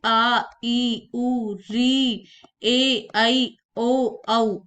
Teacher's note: दीर्घ स्वर, जिनके उच्चारण में दो मात्राओं का समय लगता है, यानी कि ह्रस्व स्वर से अधिक समय जिनमें लगता है वे होते हैं दीर्घ स्वर।